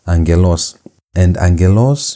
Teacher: gamma is not going to be pronounced as gamma as G sound but as N sound.